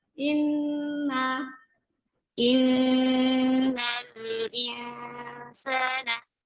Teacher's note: Coba nun tasydidnya, gunahnya, sempurnakan.